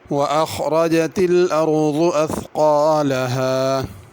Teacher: اخرجت میں خا کو، ارض میں ضاد کو، اثقالہا میں قاف کو پر کرنا ہے۔ اثقالہا میں ثا ہے، اس کو اثقالہا اگر پڑھا تو سین بن جائے گا، ایسے نہیں پڑھنا۔